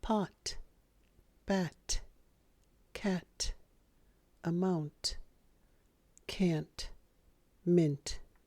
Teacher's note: 10, tonight, central, center, internet, international, magenta, painting, printer, sentence. The stop T sound in American English, sometimes called unreleased T or unaspirated T. It appears at the end of a word.